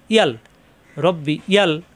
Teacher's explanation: আর যদি আমরা আল পড়ি রব্বি আল, তাহলে হয়ে যায় হামজা, এখানেও ভুল হয়ে যায়। ইয়া অক্ষরটা ইয়াই যেন হয় জিব্বার মাঝখানে উপরে চাপ দিয়া